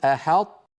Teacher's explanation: بعد الحاء ننطق طاء ساكنة غير مقلقلة، أحط، ثم نحول شكل لساننا وهو ما زال ملازما لموضع الطاء الذي هو في الوقت نفسه موضع التاء، نحول شكله ثم نجافيه فنقول تو، أحط.